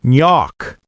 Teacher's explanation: The New York regional accent might say nyok, dropping the R, but standard keeps it.